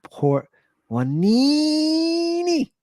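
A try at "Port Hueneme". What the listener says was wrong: Well, Wanimi with an M at the end.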